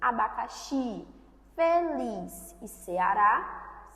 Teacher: abacaxi, feliz e Ceará são oxítonos, ou seja, a última sílaba é com o tom mais forte.